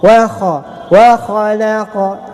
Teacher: ada pantulan sedikit pada huruf qa menjadi qalqalah sughra. 2 harakat, ada mad asli.